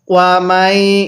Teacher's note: মিমকে ইয়ার সাথে লাগাবো, নুন সাকিনটা বাদ যাবে, কারণ সাকিনওয়ালা হরফের পরে যদি এরকম তাসদিদওয়ালা হরফ থাকে তাহলে এই সাকিনওয়ালা হরফটিকে বাদ দিতে হয়।